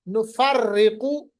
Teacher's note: یہ پر ہے کیونکہ قاف جو ہے یہ حروف مستعلیہ میں ہے